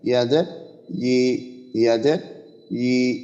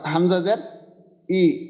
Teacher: জিহ্বার মধ্যখান যদি আমরা উপরের তালুর সঙ্গে লাগাই তো ইয়ার উচ্চারণটা আমাদের ঠিকভাবে আসবে